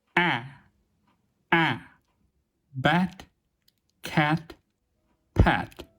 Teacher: Please listen to me carefully and repeat after me: /ɛ/ bet let pet As our jaw drops down further, we come to the low, front vowel /æ/.